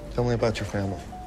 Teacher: the way that natives link their words together in american english words that end in a t sound followed by words that start with a y sound sometimes merge into a ch sound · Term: connected speech